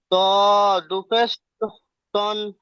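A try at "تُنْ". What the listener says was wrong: তন হবে না, তন হয়ে যাচ্ছে তুন।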